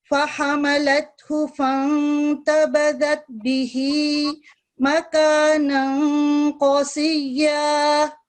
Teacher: ٹھیک ہے قاف کی آواز قدرے تھک ہوتی ہے. یہ جو 2 نقطوں والا قاف ہے اس کو تھوڑا سا موٹا کر کے پڑھتے ہیں